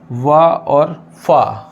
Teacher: वा और फा में जो हमारे जो होंठ हैं वो दांत से लग रहे हैं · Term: दंतोष्ठ